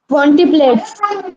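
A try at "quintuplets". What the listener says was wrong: Not टी, ये टी आई जो spelling है ना, ये गलत दिया है। It is not, आई doesn't exist, it is यू। ये आई नहीं होता, ये टी यू होता है, क्विंचुप्लेट्स।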